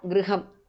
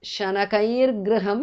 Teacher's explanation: Visarga changes to repha.